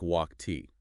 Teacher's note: It sounds like T when the base verb ends in an unvoiced consonant sounds made without your vocal cords vibrating, like K, P, S, S, G, F.